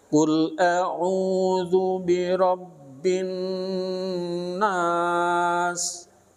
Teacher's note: Itu kan gunnah. Nun tasdid itu harus ditahan 2 harokat ya.